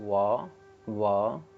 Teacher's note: वकारस्य दंत्योष्ठम, यानी वकार का उच्चारण स्थान दंत और ओष्ठ है